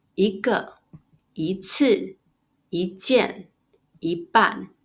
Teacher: '一' is read in the second tone